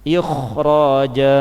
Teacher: Dia memang datang, kha sukun itu datang setelah kasrah, tetapi karena huruf setelah kha itu adalah huruf tafkhim, yaitu ra fathah, maka kha sukun yang semestinya dibaca tarkik, dibaca tipis, ini harus dibaca tebal karena ada huruf tafkhim setelah kha.